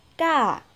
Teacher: còn ca sẽ ca cao lên, ca. Và thứ hai đây sẽ đó là ca ngang nhưng mà hẳn cao, giọng hẳn cao, âm cao.